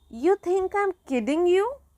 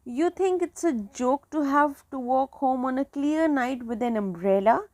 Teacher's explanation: after nearly end of each sentence, the rise of intonation let us know that these sentences are declarative questions